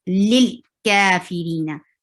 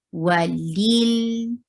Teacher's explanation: And give tawassut, medium flow of sound on lam. Don't stop it abruptly, okay?